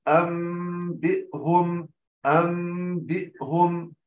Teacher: إذن إخفاء الميم الساكنة، ويكون إخفاء الميم بانطباق الشفتين بالملامسة، انطباق ملامسة وليس انطباق ضغط على الشفتين. المرحلة الثالثة تكون بإثبات الغنة في الميم بمقدار حركتين